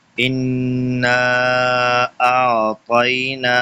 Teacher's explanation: انا کے اوپر غنہ ہو رہا ہے اور ساتھ میں مد بھی ہے، ان کو غنہ بھی کرنا ہے اور مد بھی کرنی ہے۔